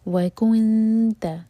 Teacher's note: جب نون پر پہنچیں تو ہونٹ گول نہ رہیں اور نون پر اخفا کریں گے